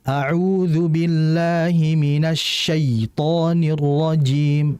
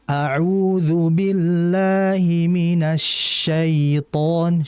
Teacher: Jadi huruf ya itu kan huruf yang keluar dari lidah dan lidahnya bagian tengah. Sehingga ketika lidah itu naik maka alirkanlah dengan lembut, tidak dengan menghentak.